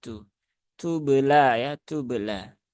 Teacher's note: dia diiringi dengan aliran nafas ketika mengucapkan huruf tak. Karena sifat tak, sifat hams dari tak itu dia adalah sifat lazimah ya, sifat yang menyertai huruf tersebut baik dalam kondisi sukun ataupun harokat.